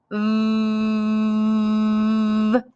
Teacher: i feel my lips doing something when i made that sound my top teeth touched my bottom lip and i could feel some air leaking out over my lip i also felt that it tickled my lip and my throat